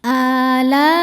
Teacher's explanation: Mad tabi'inya alif didahului fathah, hamzahnya i pada kata alai. Maka lamnya panjang, boleh 4, boleh 5 harokat. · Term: mad wajib muttasil